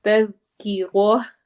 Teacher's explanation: تذکیرہ، تز ذال کو نرمی سے پڑھنا ہے، تز نہیں کرنا ورنہ وہ را کے بعد والا زا بن جائے گا۔ تذکیرہ، را کو موٹا کرنا ہے اور آگے ہا کے ساتھ ہا کی ساؤنڈ ہوگی